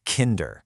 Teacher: The stress is on the first syllable.